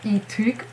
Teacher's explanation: it's not clearly an U, it has some E-ish sound in it, but it's a lot more closer to U than E.